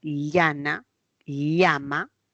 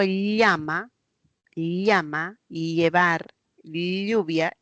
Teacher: el aire se va a los costados porque la lengua se pega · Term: lateral